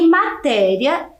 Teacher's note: ela tem a penúltima sílaba tônica mais forte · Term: paroxítona